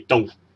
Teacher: 阳去就系低音再跌，我哋叫做阳去